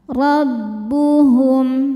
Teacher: Ro dibaca tafhim karena berharakat di atas yaitu harakat fathah. Rnya dibaca dengan tebal. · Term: tafkhim